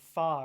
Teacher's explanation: So we talked about labod dentals which is like you know your you're saying fa right your top sorry your top teeth is touching your bottom lip